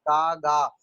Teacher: तो ये एक छोटा सा वेलम होता है, वेलम। जब आप बोलेंगे का तो आपकी जबान, पीछे वाली जबान जो है वो उससे टकराती है, उसी वेलम से, इसलिए इसको लिंगुआ वेलर साउंड कहते हैं।